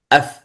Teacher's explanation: ومن بطن الشفة أي المقصود الشفة السفلى، الشفة السفلى أف. ومن بطن الشفة فالفاء، يعني مخرج الفاء، مع أطراف الثنايا العليا، يعني الثنايا العليا مع بطن الشفة السفلى.